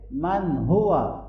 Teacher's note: نون ساکن کے بعد حروف حلقے میں سے ہا آ رہا ہے تو یہاں پر اظہار ہوگا